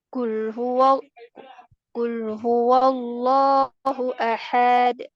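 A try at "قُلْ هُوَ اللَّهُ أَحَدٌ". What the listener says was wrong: jangan dipanjang. Hanya pendek ya. Ha-nya pendek. Nah, ini kepanjangan hanya. Hanya berapa ketukan itu? Satu. maknanya bisa berubah ya, berubah maknanya. Ini ahad, ini saya satu. Nanti berubah.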